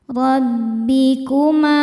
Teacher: Ro dibaca tafkhim karena berharokat fathah. Cara bacanya ditebalkan. Rabbikuma. Ma mad tabi'i dhahiri sebab ada alif didahului harokat fathah.